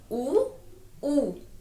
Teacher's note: उ बड़ाऊ ओष्ठ से, यानी हमारे होठों को छूते हैं। जैसे हम बोल के देखें, उ हमारे क्या शेप आई, होठों पे शेप आई ना, हमारे लिप्स पर, ओष्ठ।